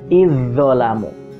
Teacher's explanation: zalnya seperti tidak ada karena masuk ke dalam huruf dha